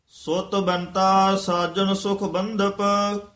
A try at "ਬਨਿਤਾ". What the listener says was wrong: ਬਨਿਤਾ ਨਨੇ ਨੂੰ ਸਿਹਾਰੀ ਲੱਗੀ ਹੋਈ ਹੈ